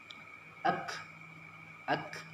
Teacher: Kaf ada hembusan nafas, angin keluarnya. Ak ada makmusnya.